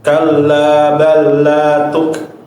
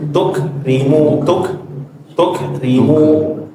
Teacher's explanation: Huruf kaf enggak boleh sampai dipantul kaf mati.